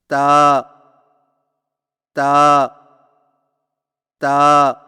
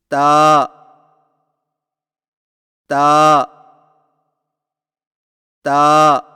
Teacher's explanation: जुबान की नोक को सामने वाले ऊपर के दो दांतों की जड़ से लगाकर बारीक आवाज में पढ़े · تا کی ادائیگی میں زبان کی نوک کو سامنے والے اوپر کے دو دانتوں کی جڑ سے لگا کر باریک آواز میں پڑھیں